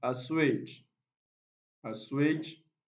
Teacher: So assuage, this is stressed on the second syllable.